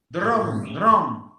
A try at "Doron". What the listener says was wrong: Tem que ser um do. Aí você tem que fazer o r, tem um O aberto e um N, não é um M. Então é doron. Doron. Cuidado para você não fazer o som do é N, não é M, não é? Ó, o M é uma consoante labial, porque eu uso o lábio para falar, né? M.